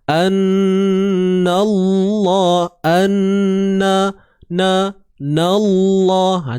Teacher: Ni huruf lam ataupun senang kita sebut kalimah Allah ni perlu dibaca dengan tebal sebab sebelumnya terdapat baris atas, huruf yang berbaris atas. So na ni jangan ditebalkan pula, tebalnya pada lam je.